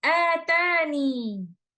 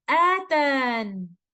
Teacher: Either we can stop with a ya sakina or without a ya sakina, which means we are stopping on letter noon.